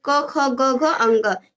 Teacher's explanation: जो क वर्ग है यानी क ख ग घ अंग, इन सब का उच्चारण स्थान कंठ है